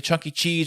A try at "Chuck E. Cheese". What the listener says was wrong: Chuck E. Cheese. Like Charles. Chuck E. Cheese, not Chunky.